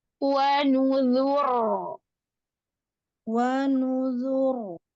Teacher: wa nu lu itu tidak ada yang tebal. Maka pangkal lidahnya jangan naik. Naik tapi sesuai tidak ditekan ya.